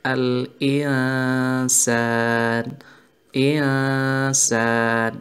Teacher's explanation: nun sukun atau tanwin bertemu dengan huruf sin pada lafadz insan. Jadi membacanya samar-samar menjadi al-insan, insan. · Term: ikhwa